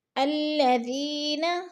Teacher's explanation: یا ایھا الذین، یا پہ جو ہے مد متصل ہے، 4 الفی مد ہے، ہم نے اس کو 4 الف کے برابر کھینچ کر پڑھنا ہے۔ الذین، ذی پہ یا مدہ ہے، یا مدہ کو بھی ہم نے 1 الف 2 حرکات کے برابر لمبا کر کے پڑھنا ہے۔